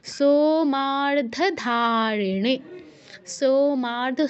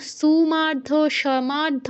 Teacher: সোতে মাতে ধাতে নেতে এই চারটা জায়গায় আমাদের দীর্ঘ করতে হবে